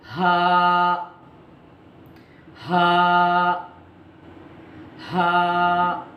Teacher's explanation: हलक के आखिरी हिस्से से जो सीने की तरफ का है, वहां से ये हर्फ अदा होता है।